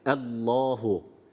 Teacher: Allahu lafzatullah kalın okunması gerekiyor